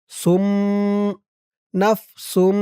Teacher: পাশে ছোট্ট একটা মিম আছে এই মিমকে ধরতে হবে ইকলাব গুন্নাহ